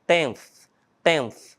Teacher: É um som que você vai colocar a sua língua atrás dos dentes e ali vai sair um som mais esfregado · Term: pronúncia do TH